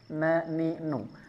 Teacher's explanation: ujung lidah bertemu dengan langit-langit mulut bagian depan agak mundur sedikit sekali ya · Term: huruf nun